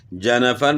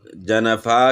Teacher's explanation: اسے وقف کی صورت میں الف سے بدل کر الف کے برابر ہی لمبا کر کے پڑھیں، جیسے جنفن پر وقف جنفا کی صورت میں ہوگا۔